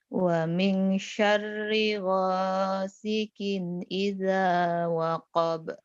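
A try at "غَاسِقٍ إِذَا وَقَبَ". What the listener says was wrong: Wa min syarri ghasiqin. Idza jangan ija ya. Idza waqab.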